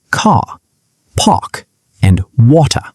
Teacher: The British accent is non-rhotic. People speaking standard British English do not pronounce the R after a vowel sound. Instead, they stretch the vowel and let the R disappear.